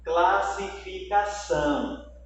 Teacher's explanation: Observe que a palavra são, a sílaba são, ela é a mais forte. Então, eu tenho aqui, ó, nessa palavra, eu tenho uma oxítona, porque a última sílaba ela é a mais forte.